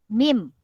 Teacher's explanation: bibir atas dan bibir bawah bekerja sama, dia tertutup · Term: huruf mim